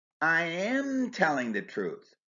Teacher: Stressing am shows insistence. In other words, you say I'm not, but I say I am.